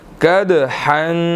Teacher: دال جو ہے وہ ساکن ہے اور حروف قلقلہ میں سے ہے، یہاں پر ہم نے قلقلہ کرنا ہے